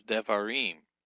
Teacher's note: The accent shifts down from var to im.